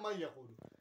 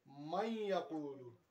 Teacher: تھوڑا ناک سے نکالنا ہے، غنہ کے ساتھ ادغام کرنا ہے